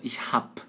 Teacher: Em alemão, eles omitem a letra E do final. E aí fica ich hab. E B soa como P de pato nesse momento.